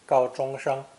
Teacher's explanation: Notice 3 first tones